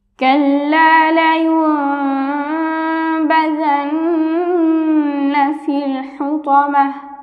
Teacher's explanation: এখানে আমরা দেখতে পাচ্ছি যে নুন সাকিনের বাবে বা, অর্থাৎ নুন সাকিনে ইকলাব, আমরা এখানে মিম দ্বারা পরিবর্তন করে গুণা সহ পড়ব। আমরা কিন্তু উপরে এখানে একটা ছোট মিম দেখতে পাচ্ছি, আমরা এখানে মিম দ্বারা পরিবর্তন করে গুণা সহ পড়ব।